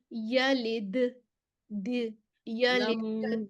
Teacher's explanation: दाल को हमने इसको बाउंस करना है आवाज को।